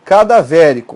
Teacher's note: proparoxítona é uma palavra que possui a antepenúltima sílaba tônica